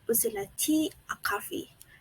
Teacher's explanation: The tone rises on the first part of the question and falls on the last part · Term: Alternative questions